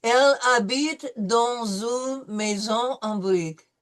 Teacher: no, we don't pronounce the H, right? It's silent.